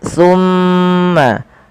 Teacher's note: pada lafal summa tahan suara mimnya sepanjang 2 harokat. Summa jangan langsung dilepaskan karena ia ada bacaan gunnah pada lafal bacaan ini.